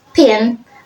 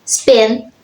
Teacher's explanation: pin with aspiration and spin without aspiration. Even though both words use the same basic sound p, the actual pronunciation is different.